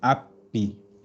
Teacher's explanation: cuando hablan en inglés hablan con la h muda